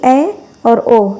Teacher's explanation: वहीं जो हमारा चौथा स्वर है वह है अर्ध समृद्ध स्वर, यानी इनके उच्चारण में मुख आधा बंद रहता है, यानी इसके उच्चारण में मुख आधा खुलता है, आधा बंद रहता है। जैसे कि ए और ओ, जिसमें एक एक मात्रा लगता है ऊपर, उनको अर्ध समृद्ध स्वर बोलते हैं।